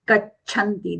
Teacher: That is alpa prana cha and the mahaprana cha are coming together. So gachanti, half cha, chai wala cha, take that as aghatan ga.